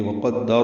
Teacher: وقدر وہ ہونٹوں کی نا تمام گلائی سے ادا کریں گے، قاف پر پڑھیں گے، دال سے ملائیں گے، دال کو وقفاً را سے ملا دیں گے۔